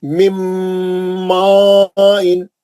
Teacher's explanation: मिम्मा इन क्योंकि बाद में मद आ रहा है ना, नून कहाँ चलेगा, मीम के अंदर है, सख्ती से अंदर चलेगा, नून नहीं पड़ेगा, मीम का गुन्ना हो रहा खाली। मिम्मा इन, मीम का ही गुन्ना होगा, नून उसके अंदर है, सख्ती से आप सख्ती से मिलाए